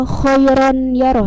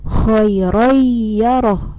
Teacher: Jadi suara nun matinya berubah menjadi huruf ya. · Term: idgham ma'al gunah